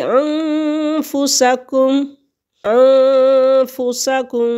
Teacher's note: ان میں سے نون ساکن یا نون تنوین کے بعد کوئی بھی لفظ آ جائے تو وہاں پہ ہم غنہ کریں گے اور دو حرکت کے برابر ناک میں آواز کو چھپائیں گے